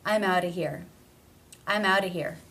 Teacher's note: the word of is generally reduced to simply being the schwa sound. No consonant.